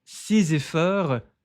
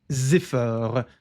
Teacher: esse Szinho se conecta com esse E da palavra effort